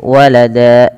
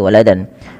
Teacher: Tanwinnya diganti dengan panjang menjadi seperti mad tabi'i. Maka walada, cara membacanya menjadi walada, bukan lagi waladan. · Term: mad iwad